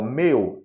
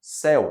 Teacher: meu tem o ditongo eu fechado céu é aberto